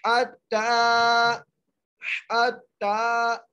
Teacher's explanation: ता को एक अलिफ की मिदार खींच के पढ़ेंगे